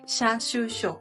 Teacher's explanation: pierden el sonido de la I y se vuelve tal cual Sha, Shu, Sho. No Xia, Shu, Sho, sino Sha, Shu, Sho o Cha, Chu, Cho.